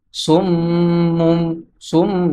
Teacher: তানবিন অর্থাৎ দুই পেশের পরে বা আসছে, এই জন্য তানবিনকে মিমের সাথে বদলাইয়া পড়তে হবে